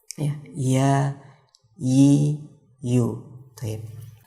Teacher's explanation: Di situ ada langit-langit keras. Nah untuk huruf ya ini dia sebenarnya dia tidak sampai menempel. Jadi tengah lidah ini dia mendekati, hampir menempel bahkan.